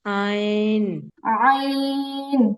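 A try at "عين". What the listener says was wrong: আইন না, ডাবল উচ্চারণ হয়ে যাচ্ছে। আইন। আইন। আ, আ, আইন। হুম, প্রথমেই হচ্ছে আওয়াজটাকে বের করতে হবে। আ, আ বলে তারপর এটারে আইন। আইন।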